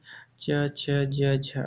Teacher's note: स्पर्श संघर्षी च, छ, ज झ स्पर्श संघर्षी हैं।